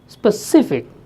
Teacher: if you have a word specific then it is stressed on the second syllable